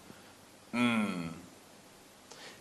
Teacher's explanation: First, with the M sound, or the mmm, we're closing both lips, and the air is escaping through the nasal passage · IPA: /m/